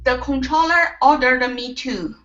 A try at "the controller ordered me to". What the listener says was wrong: Okay, now in between ordered and the M here, you're adding an extra sound saying ordered me. You want to take off the Okay, this is ordered me.